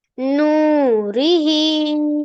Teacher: मध्य शिला को एक अलिफ के बराबर खींचकर पढ़ना चाहिए